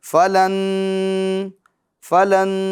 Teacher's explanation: ناک میں آواز لے جا کر ہم اس کو ایک الف کی مقدار گننا کر کے پڑھیں گے۔ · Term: ادغام